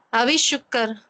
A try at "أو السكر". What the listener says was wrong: ஷூ இல்ல, ஷீன் இல்ல, அது சீன். ஏன் அவி என்று சொன்னீங்க? அவ்வாண்டு தானே வரணும், வாவுக்கு சுக்குன் தானே.